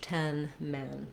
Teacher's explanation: You don't want an A-like sound for this men vowel. It's a lax central vowel.